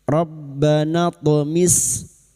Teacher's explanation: huruf th yang mati asli di kalimat qalqalah sugra. Jangan lupa dipantulkan.